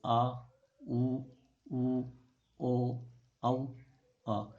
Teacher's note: इनमें पीछे का जीव का जो पीछे का भाग है वो हमेशा सक्रिय होता है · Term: पश्च स्वर